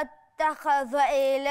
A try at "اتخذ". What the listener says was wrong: اتخذ مش ضاء، مش عايزة التفخيم بتاع الخاء يدخل على الذال فتضيعها لي في النطق، ما تبقاش ضاء. اتخذ معايا اتخذ لا